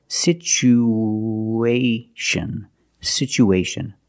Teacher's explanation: situation we have two vowels together the U and the a we need to link these vowels with the sound like the W sound together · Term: the sound W